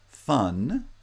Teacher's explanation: it's not a stop but it has a little bit of air flow through a very narrow opening between the lower lip and the upper teeth